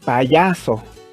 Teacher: El acento está en ya, así que ya es la sílaba tónica y pa y so son sílabas átonas